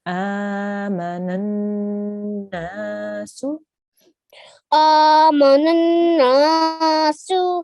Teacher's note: you need to hold on the sound and make a nasal sound for about 2 seconds. So you can squeeze up your nose a little bit if you need to, just to really make sure you're making a nasal sound. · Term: noon gunna